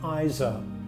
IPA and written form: eɪ s'ɑ: (AISA)